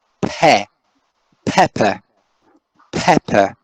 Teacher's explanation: the first syllable is pep and the second syllable is just a schwa right and this dot signals right indicates the division into syllables